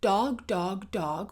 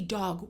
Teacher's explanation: If your tongue is at the gum ridge, we're now going to bring the tongue on the D to the back of the teeth. So, I'm going to first go dog dog with my tongue on the gum ridge. And now I'm going to say dog with my tongue on the back of the teeth.